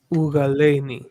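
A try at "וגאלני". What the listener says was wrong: So the u it's by itself, not ug. That's vocal. That's vocal. How do I know it's vocal? A long vowel before it. Yeah, definitely.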